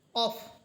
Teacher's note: এই হরফটি হচ্ছে মোটা হরফ এজন্য আমরা এই হরফটিকে আকার ছাড়া অর্থাৎ কাফের মত কা বলবো না বরং এটা হবে কফ